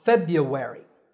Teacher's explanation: the American version is much easier the first R is silent